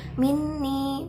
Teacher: bacaan huna sebab nun bertasydid. Ni bacaan matobi'i sebab kasroh diikuti ya sukun.